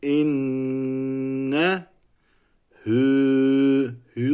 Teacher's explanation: hü Bir saniye uzatılması gerekiyor ve ismi zamir oluyor